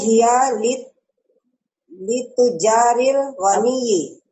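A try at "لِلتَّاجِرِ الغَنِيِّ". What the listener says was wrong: Bukan tujari, salah Bu. Masih tajiri. Tidak dijamakan. litajiri Ghaniyi. Nah, litajiril ghaniyi. Ibu tidak menyebutkan tujari. Kalau tujari berarti Ibu menjamakan kata tajir. Kalau Ibu jamakan, nah tidak dijamakan. Yang betul tidak. Saya sampaikan tadi karena dia syibuhul jumlah. Nah, syibul jumlah gitu. Tidak berubah jadi jamak. Tetap seperti apa adanya.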